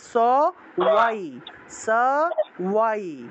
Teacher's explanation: ব উচ্চারণ করলে ঠোঁট লাগাতে হয়, কিন্তু ঠোঁট না লাগিয়ে ব উচ্চারণ করি, ঠোঁট না লাগিয়ে।